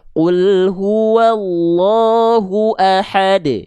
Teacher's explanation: pada saat berhenti maka itu qalqalahnya kubra. Tapi kalau misalnya dia di tengah kalimat seperti ini, maka dipantulkan dengan keadaan yang lebih ringan.